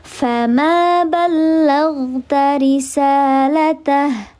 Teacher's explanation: Namanya mad tabi'i, fathah menghadapi alif, dibaca panjang 2 harakat.